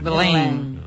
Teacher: ese E M vai ter que sair polo nariz. E vas ter que pronunciar un A e un I que saian polo nariz.